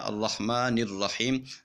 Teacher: ایک اور بات جو سی آپ کو میں سمجھانے والا ہوں وہ یہ ہے کہ ہم مثال کے طور پر سمجھانے کی خاطر ہم الرحمن اس کو علیحدہ پڑھتے ہیں اور الرحیم اس کو علیحدہ پڑھتے ہیں۔ جب ہم اس کو ملا کے پڑھتے ہیں تو پھر جو سا ہے الرحیم کا حمزہ جو سا ہے وہ ختم ہو جائے گا